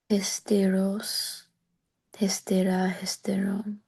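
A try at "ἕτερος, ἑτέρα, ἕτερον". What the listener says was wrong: Hetero. You're putting a sigma in there. Heteros. Het,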